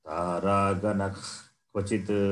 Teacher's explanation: If Visarga faces Kakara as the next letter, immediate next letter, then Visarga takes this sound, the sound which comes from the root of the Jikhva, the tongue.